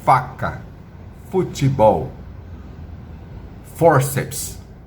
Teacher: a letra F você produz com o lábio inferior nos dentes superiores